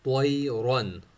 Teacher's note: طوا اور را دونوں کو موٹا پڑھیں گے